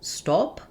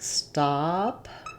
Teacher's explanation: My tongue is all the way down. My lips have no rounding. And as this is a back vowel, I have space all throughout my mouth. · visualize it like stop with the AH, and that can help you make that open, unrounded ah. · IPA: /ɑ/